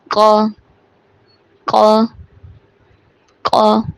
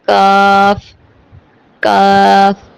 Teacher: قاف کو موٹا پڑھا جائے گا اور کاف باریک پڑھا جائے گا